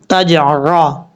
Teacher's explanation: عین کو پڑھتے ہوئے آپ نے پریکٹس کرنی ہے، حمزہ کی آواز نہیں آنی چاہیے